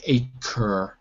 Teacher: with an American accent, we stress the R. So I say it more like acre.